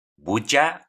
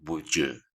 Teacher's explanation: puedes escuchar la schwa o en algunas otras ocasiones esa schwa se parece más a una U. No tan enfatizada, pero sí una U.